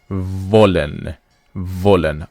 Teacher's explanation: when you want to pronounce this W in German, which is V, it is a labiodental sound, which means the upper lip touches the lower teeth.